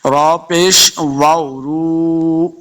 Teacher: را کو پر پڑھیں گے، را پیش واو، رو واو مدہ، اس کو دو حرکات لمحہ کرنا ہے. آخر پہ نون کو ہم لمحہ نہیں کریں گے، صرف را پیش واو، رو، اس کو دو حرکات لمحہ کر کے پڑھیں گے.